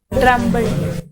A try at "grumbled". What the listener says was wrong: Drumbled. It's not drumbled. What is the first letter? G. So what is the sound of G? G-U-N? G-U-N? Gun. It is not gen. G, but it has got the sound of G. So grumbled. It is grumbled.